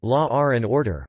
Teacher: an intrusive R is voiced after the W and before the a